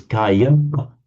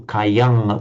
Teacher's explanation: pronounced it as Kayam with an M or Kayang with an Ng sound at the end